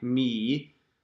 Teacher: the E vowel blends into the Y